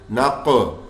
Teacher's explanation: قاف موٹا بھی پڑھیں گے اور حروف قلقلہ بھی کر رہا ہے, ساکن حالت میں آ رہا ہے